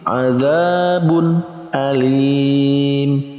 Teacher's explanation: Selanjutnya ada tanwin azabun alim, bertemunya tanwin dengan hamzah, maka ini masuk dalam kategori izhar, maka dibaca dengan jelas. Antara tanwin dibaca jelas, hamzah juga dibaca jelas.